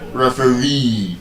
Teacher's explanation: The stress is on the last syllable.